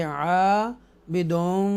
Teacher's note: यहाँ पर मद हरूफ मद्दा है, अलिफ मद्दा है, तो हम इसको ज़रा खींच कर पढ़ेंगे।